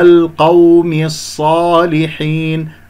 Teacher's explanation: القاف مفخمة مرتبة ثانية، الواو ساكنة قبلها مفتوح، واو لين